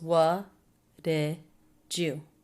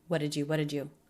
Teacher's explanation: what did you? Said quickly, low in pitch, flat, unstressed feeling.